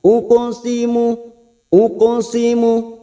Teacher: ada huruf qaf sukun qalqala sugro Karena Mati asli diengah kalimat jangan lupa dipantulkan uquosimu uqusimu huruf